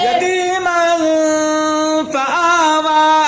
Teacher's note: نون ساکنہ تنوین جلد پڑھا جائے گا، نہ کھینچا جائے گا، نہ غنہ ہوگا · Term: اظہار حقیقی